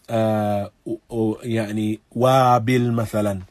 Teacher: Though the lips are not brought together, the lips are pouted with the recitation of waw. · So this wow is recited by bringing the lips together, and then the wow is very similar to our wow, to our W when it is recited in the English language.